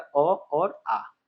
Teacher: कंठ स्वर का जो आपका एग्जांपल हो जाएगा ये हो जाएगा अ और आ